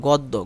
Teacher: দ সাথে জফলা থাকার কারণে এটা ডাবল দ হয়ে গেছে